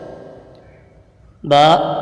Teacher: है बा दोनों होठों के तर हिस्से से अदा होता है होठों का जो तर हिस्सा है यह आपस में मिलता है तो फिर बा अदा होता